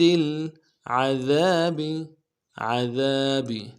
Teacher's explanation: دال کو باریک ادا کریں گے